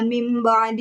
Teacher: nun sukun itu tidak dibaca jelas, melainkan diganti dengan huruf mim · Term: iqlab